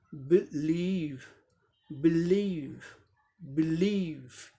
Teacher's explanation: बिलीव second syllable पे stress है। पहले सिलेबल को साधारण तरीके से बोलेंगे, सेकंड को जोर देके बोलेंगे।